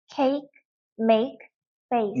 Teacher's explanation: 알파벳 A가 강세가 들어가면 이렇게 이중모음이 나기도 합니다